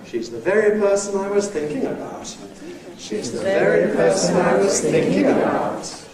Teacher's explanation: This has a High Head and then a Rise-Fall (Nucleus). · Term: Jackknife